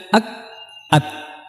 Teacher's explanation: Kita harus mendatangkan sifat syiddah dulu baru kemudian hamesnya.